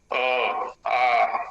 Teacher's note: अ या आ का उच्चारण करेंगे हम तो जिह्वा का कोई व्यायाम नहीं है, जिह्वा एकदम सोई रहती है, आराम करती है पूरी तरह से।